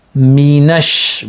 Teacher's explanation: by joining the noon with the sheen because of the shadda that's present. The shadda demands us to connect with the nearest voweled letter that comes before it.